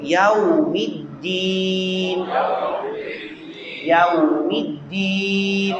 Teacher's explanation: ہونٹ گول ہو جاتے ہیں واو کے اوپر